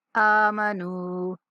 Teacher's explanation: من الذین آمنو، حمزہ کے اوپر کھڑا زبر ہے، حمزہ کو کھینچنا ہے، اور نون کے بعد واو مدہ ہے تو نون کو کھینچنا ہے